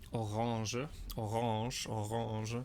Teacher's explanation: this funky, soft G sound, a kind of NG sound. Somewhere in between nasal and soft G.